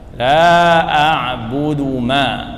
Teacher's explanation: ada mad, ada hamzah setelah mad, ini sedang 4 harakat